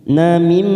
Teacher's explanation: Namim, setelah kita tekan 3 ketuk, masuk ke huruf nun bertemu mim, namanya idgham bigunnah.